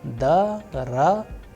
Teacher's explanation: the sound of other vowels which are not under stress would change into A. That is why daragoi.